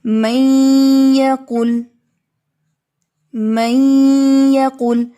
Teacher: تو اس میں نون ساکن جو ہے وہ مدغم ہے کیونکہ اس کو آپ نے یا میں داخل کرنا ہے. ٹھیک ہے، تو کہہ سکتے ہیں کہ جو فرسٹ ہوتا ہے، فرسٹ لیٹر جس کو داخل کرنا ہوتا ہے وہ مدغم ہوتا ہے.